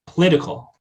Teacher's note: Schwa deletes, and then the liquid devoices because we have a syllable beginning with a voiceless obstruent, voiceless stop. So voiceless stop before a liquid will cause that liquid to devoice. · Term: liquid devoicing